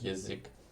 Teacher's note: the A then turning into like E or like E when it's unstressed, like in язык, which isn't yazik, even though it's spelled with ya, but it's like язык.